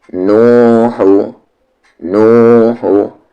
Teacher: नू को यहाँ पर खींचेंगे क्योंकि नून के साथ वाव मद्दा है, और हा को बिल्कुल भी नहीं खींचेंगे क्योंकि उस पर सिर्फ हरकत है